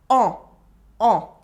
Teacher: On the other hand, en is another pronoun. It is pronounced en, the French nasal vowel.